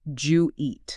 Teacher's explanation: The hard D and the Y biologically blend together in the mouth. It becomes one fluid forward sound.